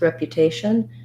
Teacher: have a little secondary stress on the rep because it has the clear f vowel rep and then um